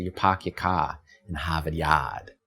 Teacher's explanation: The famous thing that the Boston accent does is it drops the rhotic R that follows a vowel.